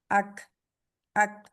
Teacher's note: तालू के सख्त हिस्से से जाके जुबान की जड़ लगती है। तो जिससे ये अदा होता है। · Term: कैफ